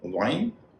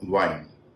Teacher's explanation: वी का व बोलते समय नीचे का होंठ ऊपर के दांत को छुए, और डब्ल्यू का व बोलते समय हमारा होंठ गोल रहे। आमतौर पर हिंदी में हम वी का व जैसा ही व बोलते हैं, क्योंकि हमारा हिंदी का जो व है वह दंतोष्ठ कहा जाता है।